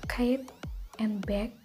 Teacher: Memblokir udara dengan bagian belakang lidah menyentuh langit-langit lunak.